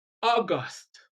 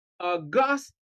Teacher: If a two-syllable word is used as a noun and also as an adjective, stress the first syllable when it is a noun and stress the second syllable when it is an adjective